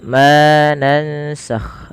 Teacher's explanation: Ma di sini dipanjangkan dua harakat karena ia kita hukumi dengan bacaan namanya mad th'i atau bisa dikenal juga dengan mad asli.